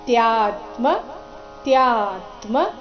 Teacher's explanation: ತ್ಯಾ ಆದ ನಂತರ ಅರ್ಧತ ಮತ್ತೆ ಪೂರ್ತಿಮ